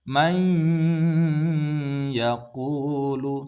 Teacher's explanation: Jadi kita memasukkan mai disertai dengan dengung. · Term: idgham bi gunnah